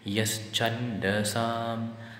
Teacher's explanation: So intonation marking, many make a mistake here. They bring the higher pitch to a lower one so as to make it sound as yas chandasam.